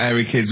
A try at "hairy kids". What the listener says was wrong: Sorry, I noticed both of you there dropped the H, or the H, or however it's pronounced. So airy kids, hairy. Hairy children, not sort of airy, kind of light-headed or...